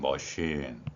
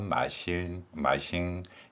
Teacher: 어 발음이 없기 때문에 이제 아 발음을 합니다